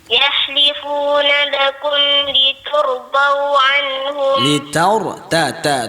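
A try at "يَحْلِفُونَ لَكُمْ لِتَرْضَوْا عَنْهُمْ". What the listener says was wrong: Ta fathah.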